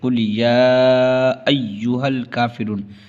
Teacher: حرف مد کے بعد حمزہ دوسرے کلمے میں ہے، اس کو 2.5 الف کے برابر کھینچ کے پڑھیں گے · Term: مد منفصل